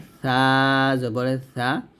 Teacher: ছা টা যখন উচ্চারণ করব জিহ্বার আগা উপরের দাঁতের আগা